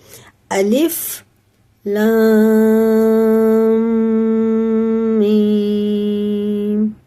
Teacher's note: लाम को मीम से मिलाते हुए कुन्ना करेंगे